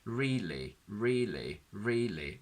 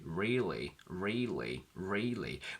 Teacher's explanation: where you get this guttural wah, wah, wah sound given by the tongue movement that is typical to the dark L